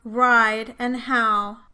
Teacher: The strong diphthongs are made with a greater change in height and advancement than the weak diphthongs. The vowels in the word ride and how both start from a low central tongue position.